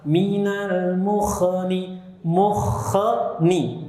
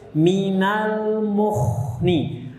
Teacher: Itu pantulan pada kha salah. Karena kha tidak punya sifat qalqalah. Jadi dialirkan suaranya bukan dipantulkan. Minal mukhni, nah itu sifat rokhwah, mengalir suaranya.